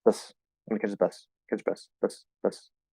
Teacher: if I were to say bus like really fast and really unclearly, it would basically just be a B and an S